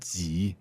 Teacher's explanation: third tone that's right go down and up especially down go low